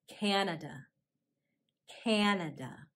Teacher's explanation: notice how in canada the second syllable is a schwa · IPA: /kænədə/